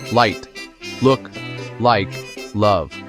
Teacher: So let's talk about the clear L sound, or L. In English, the tip of your tongue touches the inside of your upper teeth